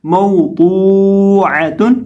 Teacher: اب یہاں بھی ہم ضاد کو ایک الف کے برابر لمبا کر کے پڑھیں گے اور ضاد کو ہم موٹا کر کے پڑھیں گے. ضاد سبز رنگ میں لکھا ہے، موٹے حروف میں سے ہے، تو اس کو پڑھیں گے موضوعۃ، اور وقف اسی طرح ہوگا جس طرح ہم نے پچھلے دو حروف میں کیا ہے.